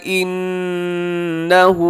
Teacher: یہاں نون مشدد پہ غنہ کیجیے گا